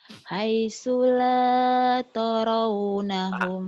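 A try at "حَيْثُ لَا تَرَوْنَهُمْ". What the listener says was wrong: Jangan toro, taro dulu. Mentang-mentang orang Bengkulu O-nya ini, ta-nya dibuat O juga toro. Ta-nya kan ta. Baru melubah mulut taro. Ro-nya yang O-nya taro, jangan toro ya.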